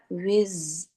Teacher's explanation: وز میں بزنگ بھی ہے، اور رخاوت بھی ہے، مخرج میں آواز ہے اور آواز تھوڑی سی دیر تک جاری بھی رہ رہی ہے